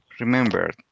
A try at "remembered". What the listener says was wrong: Okay, so the pronunciation is remembered with D at the end. Remembered.